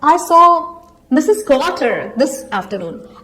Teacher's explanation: the rising intonation makes it sound like a question. It asks whether I was the person who actually saw Mrs.